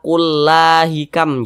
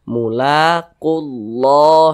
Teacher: Jadi lam jalalahnya ini dibaca tebal, dibaca tafkhim.